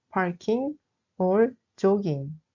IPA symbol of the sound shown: ŋ